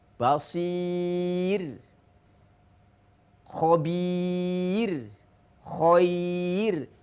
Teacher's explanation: Ba-nya itu ada huruf mad karena sebelum ya sukun ada huruf ada harokat kasroh. Maka ro dibaca tarqiq atau tipis, ya. Jadi sahabat, setiap ada ro sukun didahului oleh ya sukun, baik ya-nya itu ya mad atau ya huruf lin, maka ro dibaca tarqiq.